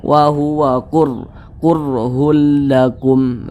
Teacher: maka huruf ra sukunnya itu dibaca tebal · huruf ra sukunnya itu dibaca tebal, dibaca tafkhim, sehingga ketika kita mengucapkannya itu pangkalisan kita itu naik terangkat ke atas.